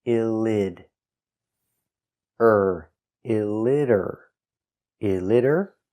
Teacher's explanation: the T is pronounced with a D between vowels.